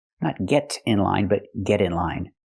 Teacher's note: we hear the pronunciation of T change to a fast D because it's between vowels not get in line but get in line we say get